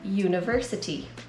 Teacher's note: The word university starts with a vowel, but it doesn't sound like it. When you say it, it sounds like it starts with the consonant Y